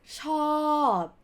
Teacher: it has to be long sound with swallowed ending consonant sound